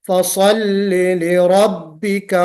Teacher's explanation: स्वाद निकालना है, इसको मोटा भी पढ़ना है और छोटी सी सीटी भी बजनी है इसमें। फसल्ली लिरब्बिका, रा को मोटा पढ़ना है, लिरब्बिका लाम को जेर वाज़ेह करके पढ़ना है, लिरब्बिका मजहूल करके लिरब्बिका नहीं पढ़ेंगे।